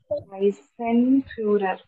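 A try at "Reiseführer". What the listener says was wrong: റൈസൻ അല്ല റൈസേ ഫ്യൂരർ.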